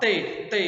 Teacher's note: A língua bate lá no dente.